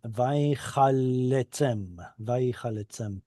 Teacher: Yeah, if I divided this, I would put a division there, one through the lamed, so we get vai chal letzem. Now, why do I make two L sounds? Well, because it's geminate. Yeah, there's a dagesh there, so I'm dividing straight through those two grammatically doubled lamed letters, and vai chal letzem, vai chal letzem.